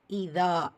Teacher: இதா தால அலிஃப் மத்தா 2 ஹரக்கத்தளவு நீட்டம் கொடுக்கணும்.